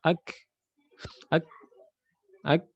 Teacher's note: Dia tidak mengalir suara tapi mengalir nafasnya ya, huruf kaf dan ta. · Ketika mengucap huruf kaf ya tertahankan suara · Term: sifat al-asyiddah